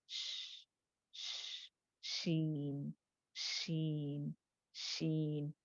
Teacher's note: آپ کا when the middle part of the tongue touches the exact opposite heart palate. جب آپ کی زبان کا درمیانی حصہ اس کے ایگزیکٹلی اوپر سخت تالو کو لگے تو شین ادا ہوتا ہے